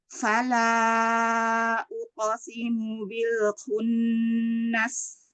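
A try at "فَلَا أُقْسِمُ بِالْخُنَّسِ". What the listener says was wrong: Lamnya tipiskan sekali lagi, coba bisa nggak? Jangan fala, turun lagi. Ya, pangkal lidahnya turunkan. Fala. Uqo. Ya, jadi pantulan qafnya tetap tebal ya, jangan uqo, jangan terbuka suaranya ke depan, jangan uqasimu, tapi uqasimu tetap tetap ke atas.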